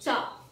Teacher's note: और जो ये च है च ये ताल से बोला जाता है